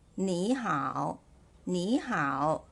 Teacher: the word 你 is read as the second tone